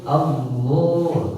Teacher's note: Al barulah ketika ke harokat la-nya barulah tebal. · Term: tafkhim